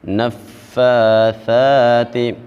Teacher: نفاثات، جس لفظ کے اوپر کھڑا زبر آ جائے اس کو بھی ایک الف کے برابر لمبا کیا جاتا ہے۔ ہم نے فا کو اور ثا کو ایک ایک الف کر کے لمبا کرنا ہے